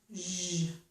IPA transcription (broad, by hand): ʒ